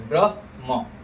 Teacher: ह आएगा, देखिए यहाँ पर पहला ह है, फिर म है, फिर अ है, तो ब्रह्म, ह आधा बोलेंगे, फिर म बोलेंगे